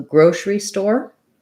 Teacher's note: One thing to watch out for is you don't really necessarily need to say grocery. We tend to reduce this and go right from our S or SH sound to our R sound. So grocery store, first syllable stress, or grocery store.